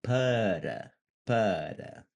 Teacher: We want the tap. We want this like light flappy R sound. It's usually going to be um, somewhere behind your front teeth, the top of the roof of your mouth, or the ceiling of your mouth.